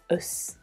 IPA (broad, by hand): əs